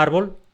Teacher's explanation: la palabra árbol la pronuncio con una fuerza especial en la sílaba ar, la primera sílaba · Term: acento prosódico